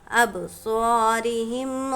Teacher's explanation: با پر جزم ہے، با حروف قلقلہ میں سے ہے، اس لیے اس کو پڑھیں گے تو قلقلہ کریں گے۔ قلقلہ یعنی کہ اس کے جو پڑھیں گے تو اس کے حروف میں ٹکراؤ ہوگا۔